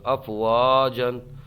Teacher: الف میں مدہ ہوگا ایک الف کھینچ کر کے پڑھیں گے